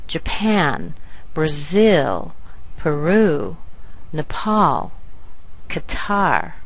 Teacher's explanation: this is the way that we pronounce these two-syllable words that end with a stressed syllable